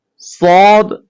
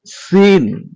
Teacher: সদ মোটা করে পড়তে হয়, আর সিন পাতলা করে পড়তে হয়।